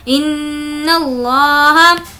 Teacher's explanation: لفظ اللہ سے پہلے زبر ہے اس لیے اس کو پر پڑھیں گے اور نون پر تشدید ہے غنہ کیا جائے گا.